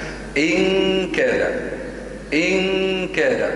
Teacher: مخرج الكاف من أي؟ من أقصى، يعني يكون قفل نهائي. إن كاد ينقفل، مش إن، ما لا تتركوا فرجة كمل أو شيء هذا يعني فراغ، لا لا، إن ينقفل تماما.